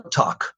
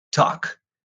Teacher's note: Esta A suena como una O, ¿no? Y la L no suena